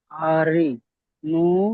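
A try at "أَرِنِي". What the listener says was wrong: কোনটা টান হবে এখানে বলেন তো দেখি। তা আপনি টান দিয়েছেন? আর টান দিচ্ছেন কেন? এইটা টান দিচ্ছেন কেন? আর টান দিচ্ছেন কেন?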